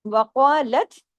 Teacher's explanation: قاف کو ہیوی کیجیے، آگے دونوں حرف باریک ہیں